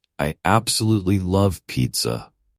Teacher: you'll notice how absolutely is stressed giving it that extra punch of enthusiasm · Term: word stress